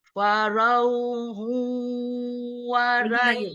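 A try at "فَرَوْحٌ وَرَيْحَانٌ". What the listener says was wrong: Ro-nya naikin pangkal lidah. Jadi memang bukan ro, tapi ro, naik pangkal lidah. Ro, jadi memang berubah di belakang. Justru PR-nya huruf ro.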